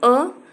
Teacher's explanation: कंठ से उच्चारण इसका होता है, ह्रस्व मात्रा है और जीभ की स्थिति मध्य अ, और मुख्य विवर है अर्ध विवृत और ओष्ठ की स्थिति है उदासीन।